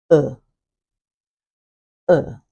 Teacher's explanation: vowel number 10 is often described as half open, central or mid, unrounded, and lax. Half open, central, unrounded, lax. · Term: central vowels